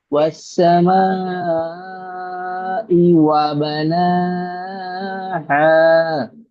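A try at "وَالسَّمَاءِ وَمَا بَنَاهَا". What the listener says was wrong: ওয়াস সামাই ওয়ামা, মিমটাকেও একালিক পরিমাণ টান হবে, কারণ জি আলিফ মাদ্দা আছে।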